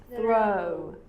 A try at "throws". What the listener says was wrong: Te sale como U un poco.